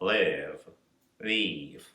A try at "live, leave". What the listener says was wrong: And can you drop your tongue even more, like really, we want this sort of pizza bella, like only the tip of your tongue. It's very Italian, that's why I said that.